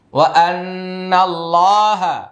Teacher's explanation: وأن الله هو العلي الكبير وأن الله এটা ওয়াজিব গুন্না, তারপর আল্লাহ শব্দের লাম মোটা হবে এক আলিফ টান